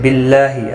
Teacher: اللہ کا لام اس زیر کی وجہ سے باریک پڑھا جائے گا، اس کے اوپر کھڑی زبر بھی ہے، ایک الف کی مقدار کے برابر کھینچ کر بھی پڑھیں گے۔